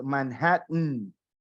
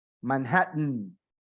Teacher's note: The way she said it was Manhattan. Esa T o doble T, por lo general los americanos la hacen como un sonido trabado en la garganta. Manhattan. Es como cuando ustedes ven las películas de Marvel, de los superhéroes, y escuchan en inglés cómo lo llaman al Capitán América.